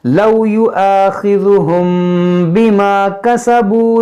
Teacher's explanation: میم ساکن کے بعد با یہاں پر اخفا کریں گے یعنی اخفاء شفوی ہوگا